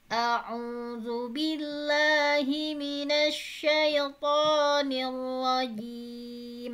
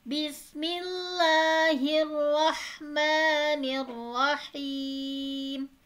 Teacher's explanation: Rendah, kemudian tinggi bismillahnya.